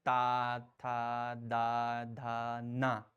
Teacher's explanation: इन सभी को जब हम बोलते हैं तो जीभ हमारी दांतों से जरूर लगती है। इसीलिए इनको दंत कहा गया।